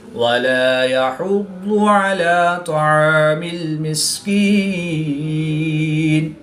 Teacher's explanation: ضاد حروف مستعلیہ میں سے ہے تو اس کو پور یعنی موٹا پڑھیں گے